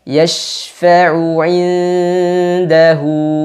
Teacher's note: Nun sukun ketemu dal pada kata inda. Hukumnya ikhfa hakiki. Nunnya disamarkan dan disertakan dengan gunnah 2 harokat.